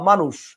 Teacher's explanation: তার মানে ব্যাপারটা হচ্ছে কি, মূর্ধন্য স আপনি লিখতেছেন কিন্তু উচ্চারণটা কি হচ্ছে? তালব্য।